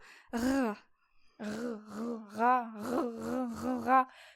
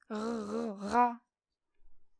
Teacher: en portant le bout de la langue jusqu'au haut du palais, de sorte qu'étant frôlée par l'air qui sort avec force, elle lui cède et revient toujours au même endroit, faisant une manière de tremblement.